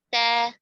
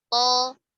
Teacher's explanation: Karena kalau ta dibaca tebal menjadi to. To kalau dibaca tipis menjadi ta. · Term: sifat tebal tipis